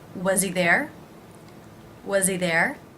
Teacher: I'm going to drop the H reducing the word he and because I'm going to do that I want to make sure that I really link things so I'm actually going to almost think of the Z sound